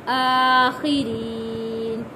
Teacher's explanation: کھڑا زبر ایک الف کے برابر کھینچ کر پڑھیں گے۔ خا کے نیچے زیر ہے، خی پڑھیں گے، خی، اور را کے نیچے جب زیر ہو تو را کو باریک پڑھتے ہیں۔